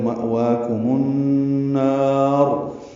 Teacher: اور اس کے بعد ایک یا کا نشان بنا ہوا ہے، یہ نہیں پڑھیں گے، کاف باریک ہے، میم پر پیش لگا کے النار کے نون سے ملا دیں گے. النار کا حمزہ عارضی ہوتا ہے تو مأواکم النار، نون کو لمبا کریں گے اور را پر پڑھیں گے.